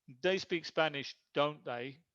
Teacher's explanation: This is don't they, is falling intonation. This is not a real question. I know they speak Spanish, I'm just asking for confirmation.